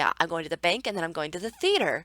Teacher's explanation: We know by the way that the pitch falls on “theater” that this is the end of what this person is going to say.